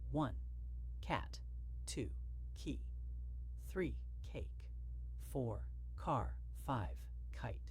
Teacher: The K sound is produced by blocking the airflow at the back of the mouth with the tongue and then releasing it suddenly.